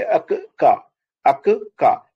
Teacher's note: ఫస్ట్ది నేను ఆ ప్లస్ సగం కా తర్వాత ఫుల్ కా